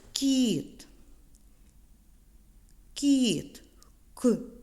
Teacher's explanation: це приголосний але ми чуємо його м'ягко це М'який приголосний звук